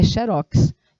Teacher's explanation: Ele puxa a tonicidade da sílaba para a última, e se você tem a última sílaba tônica, se torna uma palavra oxítona.